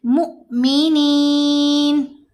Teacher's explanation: حمزہ ہے تو یہ حمزہ ساکن ہی پڑھا جائے گا، تو حمزہ ساکن سے جب ملائیں گے تو چھوٹی آواز ہوگی اور جھٹکا دیا جائے گا ، جھرک ہوگا آواز میں، مؤمنین۔ دیتی ہوں کلاسیں خواتین کو،